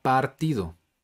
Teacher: Por ejemplo, este sonido sería similar a la vocal A en la palabra partido. Se pronuncia como A, pero es un sonido vocálico más corto en comparación a la palabra padre. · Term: vocal corta